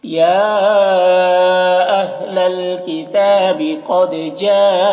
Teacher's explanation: قد میں قاف کو پر پڑھیں گے، دال میں قلقلہ کریں گے، جا میں مد متصل ہے، اسے 3-4 الف کے برابر کھینچیں گے۔